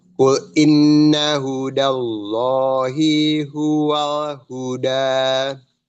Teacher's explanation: Hudanya ya langsung bersambung dengan kalimat jalalah Allah.